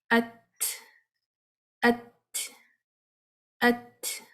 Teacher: پہلے ات اور اس کے بعد سانس کو باہر پھینکیں گے جھٹکے کے ساتھ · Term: ہمس